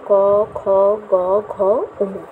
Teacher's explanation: জিহামূল গোড়ার দিকটা কণ্ঠের দিকে তালুর কোমল অংশকে স্পর্শ করে। তাহলে কণ্ঠের দিকে তালুর কোমল অংশকে স্পর্শ করে বলেই একে কণ্ঠ ব্যঞ্জন বলে।